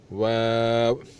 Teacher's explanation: होंठों को गोल करके अदा किया जाए